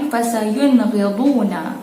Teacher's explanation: Nun sakinah bertemu dengan ghain, sama juga, jelas, nyata dan terang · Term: izhar halqi